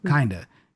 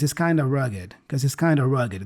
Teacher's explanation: the of there gets reduced to a schwa sound. So kinda.